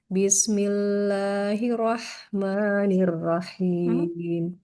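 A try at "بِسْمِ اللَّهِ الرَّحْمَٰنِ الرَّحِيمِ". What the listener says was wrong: Kita ulang Ibu basmalahnya. Jangan bismillahirrahman. Nanti tanda tasydid pada huruf ro-nya seperti hilang. Hirro. Ditekan huruf ro-nya. Bismillahirrahmanirrahim.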